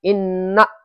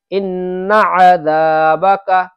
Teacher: نون کو کھینچ دیتے ہیں، نون کو کھینچنا نہیں ہے